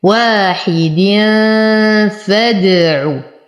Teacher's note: وتم كسرة الحاء والدال وبعدها حرف الفاء في الكلمة الثانية، فالحكم إخفاء مع غنة